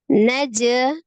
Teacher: ada jim, sukun, kolkolah, huruf kolkolah ya, jim disukunkan, harus dipantulkan. Ketika posisinya tengah, berarti dia kolkolahnya sughra, kolkolah kecil.